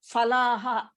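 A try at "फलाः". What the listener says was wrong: That is wrong pronunciation. It is in Hindi. It is fa. In Sanskritam, there is no fa. The second pa is pronounced as Pa. Pa. Pa. The first one is pa. The second one is pa. Phalaha.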